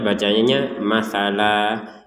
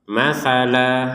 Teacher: panjangnya dua Har dua harakat jadi dari yang tanwin fathatain ini kita bacanya bukan tanwin lagi tapi membacanya dua harakat panjang dua harakat